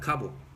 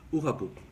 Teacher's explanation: It's the same word, but you see how they add the vowel, they kind of took away the K and they replaced it with an H